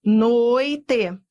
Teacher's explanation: noite, ditongo. Ó, vai do forte pro fraco, decrescente. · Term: ditongo decrescente